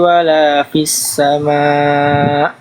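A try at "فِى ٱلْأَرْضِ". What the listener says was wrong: Tinggal di huruf dod. Dodnya kurang tebal ya. Coba ikuti saya. Angkat lagi pangkal lidahnya di sini.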